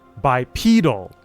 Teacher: When you add the suffix to make it an adjective, the stress shifts to the second syllable and the e transforms into a long e sound.